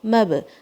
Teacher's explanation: مب با کے اوپر قلقلہ، میم کو لائٹ رکھنا ہے آپ نے